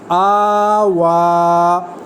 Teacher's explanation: یہ کھڑی زبر، کھڑی زیر اور الٹا پیش یہ مدہ کے ہیں، ایک الف کے برابر ان کو لمبا کیا جائے گا